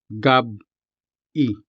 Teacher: there's a glottal stop between them